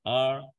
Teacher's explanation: Orang Inggris itu nggak ada getar huruf ro, or, iya, kayak rada cadel.